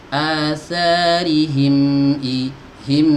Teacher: huruf mim punya sifat yang namanya bainiyah, mengalir tapi sekedarnya ngalir aja, nggak boleh panjang, nggak seperti rokhawah ya. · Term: sifat bainiyah